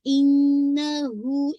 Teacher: इन्ना पे भी आपने टू काउंट होल्ड करना है जो कि आपका अकमल गुन्ना है